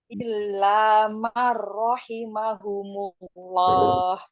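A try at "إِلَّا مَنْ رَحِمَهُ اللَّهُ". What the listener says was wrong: Nggak pakai humullah. Hullah saja. Nggak ada mimnya itu. Rahimahullah.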